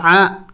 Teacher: عین حروف حلقی میں سے ہے اور وسط حلق سے ادا ہوتا ہے